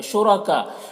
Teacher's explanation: کاف میں مد متصل، اسے 3-4 الف کے برابر کھینچ کر پڑھیں گے